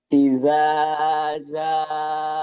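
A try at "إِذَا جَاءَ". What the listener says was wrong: Ajaknya keras. Jakarta, Jatinegara, janya keras. Ojo lali, ja.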